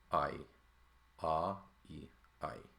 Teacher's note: your tongue is in different places to say ah and then e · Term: diphthong